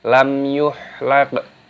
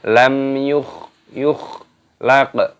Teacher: Kalau ha itu bersih, kalau kho itu agak sedikit kotor. Bukan lam yuhlaq, bukan, tapi lam yukhlaq.